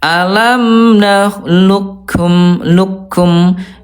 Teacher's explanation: Ini betul-betul hilang huruf qof-nya ya. Namanya idgam kamil, idgham yang sempurna ya. Jadi tidak menebalkan qof dulu. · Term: idgham kamil